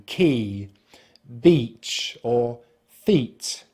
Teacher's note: When you pull the tongue back, it's important then to point it towards the roof of the mouth, but do not touch, to make the voiced R sound, finishing with the lips spread and the tongue slightly forward at the front of the mouth for the long vowel sound /i:/